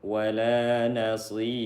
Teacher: Nah, ra-nya disukunkan karena waqaf. Sebelumnya ada ya sukun, maka dibaca dengan tipis. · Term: tarqiq